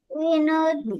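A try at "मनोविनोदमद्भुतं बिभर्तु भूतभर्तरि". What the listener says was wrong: नहीं, मनो बोलो पहले।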